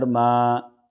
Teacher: را زبر ار، راح زبر راح، الرح، میم کھڑا زبر ما، میم کے پر کھڑا زبر ہے، دو حرکت کے برابر اس کو کھینچیں گے ، مد اصلی ہے تو دو حرکت کے برابر اس کو